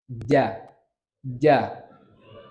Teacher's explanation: kalau huruf ja itu ujung lidah ke tengah-tengah langit-langit. Ja, ja. Ya nggak ujung banget tapi ya di belah sinian lah.